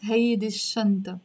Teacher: the sheen here is a sun letter. So I have to drop the l sound and pronounce it hey this shanta.